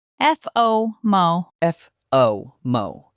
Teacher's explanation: In English, it is a flat, stressed first syllable.